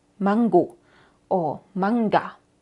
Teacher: formamos La n más atrás de lo normal esto pasa automáticamente y pronunciamos la g normal mangu o manga pero en alemán